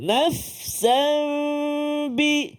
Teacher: iqlab apabila tanwin dia nak beri gambaran dah kepada kita iaitu menukar suara tanwin tu ataupun suara Nun tu kepada mim kepada bunyi mim tu